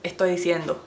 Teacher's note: They don't really enunciate the S.